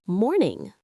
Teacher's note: The G often gets dropped, so it's almost morning.